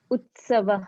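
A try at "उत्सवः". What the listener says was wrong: yeah. Utsavaha. It's correct.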